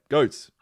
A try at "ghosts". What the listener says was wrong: It sounds like you're saying goats. Ghost. Ghosts. You keep saying goats.